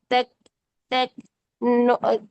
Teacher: जो काफ की हम्स और जो ता की हम्स है उसमें ख और थ खिड़की वाला ख हाथी वाला थ ये साउंड नहीं होती है